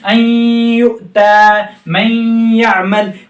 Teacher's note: इदगाम यूमिन के कायदे में, यूमिन के कायदे में गुन्ना करके पढ़ा जाएगा